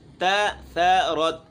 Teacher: تا اور ثا باریک ہے، ثا بالکل نرم ہے، اور تَثَرَتْ را ہے، اس کو موٹا پڑھنا ہے۔